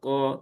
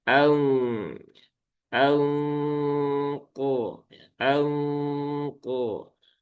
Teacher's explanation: nun sukun bertemu qof dia ikfa ab'ad dan juga ikhfa yang tebal. Maka suara eng-nya itu eng yang tebal.